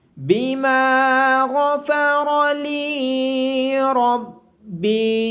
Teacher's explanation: بما غفر لی ربی، میم کے بعد الف مدہ ہونے کی وجہ سے میم کو لمبا کیا جائے گا۔ غائن اور دونوں را موٹے پڑے جائیں گے۔ لام کے بعد اور با کے بعد یا مدہ ہونے کی وجہ سے ان دونوں کو لمبا کیا جائے گا۔